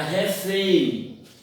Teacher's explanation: Observe que a sílaba tônica ou a mais forte é fém, é a última, então é oxítona. Termina em EM, então deve ser acentuada.